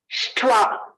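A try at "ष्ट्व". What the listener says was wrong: So when you're saying takara, make it takara, you are sounding like Mahaprana. Tha. It should not be tha, it is ta. Shtwa. Not shtwa. It is shtwa. Shtwa. Alpa prana eva.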